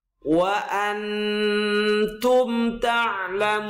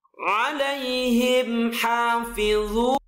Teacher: Maka disebut idhar safawi. Ada mim sukun bertemu selain mim dan ba, dibaca tidak mendengung atau dibaca jelas.